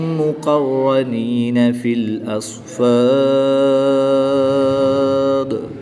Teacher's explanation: جب دال ساکن ہوگا تو یہ حروف قلقلہ میں سے ہے تو یہاں پر قلقلہ صغریٰ بھی کریں گے، اور یہاں پر وقف کی حالت میں مد عارض ہوگی، 2 سے 3 الف تک کھینچ کر پڑھیں گے · الف سے پہلے فا پر زبر ہے تو الف مدہ ہوگا، یعنی ایک الف یعنی دو حرکات کے برابر کھینچ کر پڑھیں گے